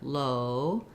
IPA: oʊ